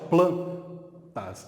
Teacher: Quanto à tonicidade, o plan é muito mais forte, plantas. Eu tenho aqui uma paroxítona.